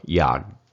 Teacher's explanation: It's the G, but you're stopping it kind of with a K sound. And you don't quite say the K sound.